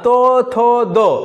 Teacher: দেখো দাঁতের গোড়ায় কিন্তু উচ্চারণ হচ্ছে, তাই এগুলোকে বলা হচ্ছে কি দন্তধ্বনি।